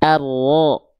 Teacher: huruf ro itu dilafalkan dari punggung lidah.